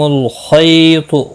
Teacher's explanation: لکم الخیط خا اور تو دونوں مستعلیہ ہے، پور پڑا جائے گا. خی یالین ہے، تھوڑا نرمی کے ساتھ کھینچ کر ادا کریں گے